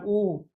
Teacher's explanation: जब हम इस वाले उ का उच्चारण करते हैं तो हमारे होठ जो है वो गोलगोल आकृति बनाते हैं। वो वर्त बनाते हैं। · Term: वृत्ताकार, वर्ताकार